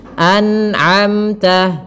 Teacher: harus dijelaskan nunnya dan tidak boleh memantul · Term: izhar